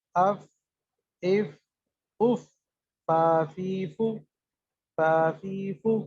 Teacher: ثنایا علیہ کا کنارہ، نچلے ہونٹ کا اندرونی حصہ تری والا، اس سے فا نکلتا ہے · نیچے والے ہونٹ کا جو اندر والا حصہ ہے، تری والا حصہ، اس حصے پر جب وا لگتے ہیں تو فا ادا ہوتا ہے